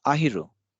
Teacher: the last syllable has to be pronounced very lightly